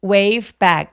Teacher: 백의 애 소리는 apple 할 때 애처럼 굉장히 긴 소리를 냅니다.